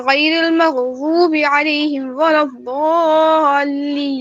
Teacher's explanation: مغضوبی میں وا کو پر پڑھنا ہے اور اس کو تھوڑا سا کھینچنا ہے کیونکہ وا کے ساتھ واو آتی ہے.